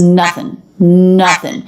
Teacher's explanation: an NG ending she doesn't say nothing she says nothing nothing so making the NG ending just an N ending · making the N-G ending just an N ending, I as in sit, N, nothing.